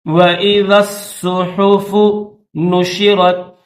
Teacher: ذال کو صاد کے ساتھ ملائیں گے.